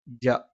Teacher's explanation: നാവിന്റെ മധ്യഭാഗം മേലെ അണ്ണാക്ക്